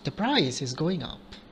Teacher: so it's a falling tone and it's a statement